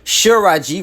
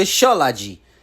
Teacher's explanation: The word for Cherokee was originally pronounced Shiraji with an R in the Southern lower dialect before it went extinct, but changed to Shalaji with an L in the dialects that survived.